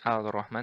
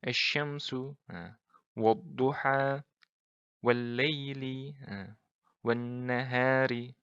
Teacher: Nah, jadi lamnya melebur ke huruf setelahnya. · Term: lam ta'rif syamsiyah